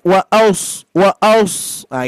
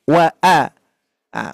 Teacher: bukan o tapi a tetap tipis